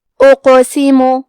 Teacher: قلقلہ کا معنی ہے حرف ساکن کو ہلانا، تو ہم حرف القاف کو ہلاتے ہوئے یہ کلمہ کو پڑھیں گے · حرف القاف کی ادائیگی زبان کے جڑ اور تالو کے نرم حصے سے ہے. قاف حروف التفخیم میں سے ہے تو ہم یہ حرف کو موٹی آواز میں بھی پڑھیں گے